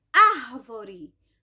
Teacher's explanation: esta palavra é proparoxítona por quê Porque a sílaba mais forte dela é a antepenúltima